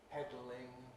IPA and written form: ˈpedlɪŋ (pedalling)